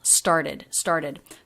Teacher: a t becomes a flap t when it comes after an r before a vowel